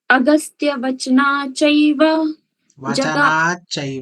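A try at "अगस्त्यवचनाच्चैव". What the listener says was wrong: वचनाचैव इसको आधा मत कीजिए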